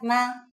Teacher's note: to ask a question it works just like a question mark put it at the end of the sentence with a low tone